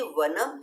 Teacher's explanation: तो ये वनम है, ये बहुत से न्यू कैंडिडेट्स नहीं समझ पाते हैं, वो ये समझते हैं कि ये न की ही साउंड है, न ये न का ही उच्चारण होगा, ऐसा नहीं है। संस्कृत में शब्द के अंत में आने वाला अनुस्वार जो होता है वो म साउंड को बनाता है, म साउंड के लिए आता है, राइट?